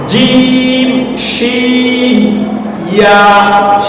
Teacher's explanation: এরপরে যদি আমরা দেখি জিম শিন ইয়া, এই তিনটা হরফ উচ্চারিত হয় জিহ্বার মধ্যভাগ এবং এর সোজা উপরের তালু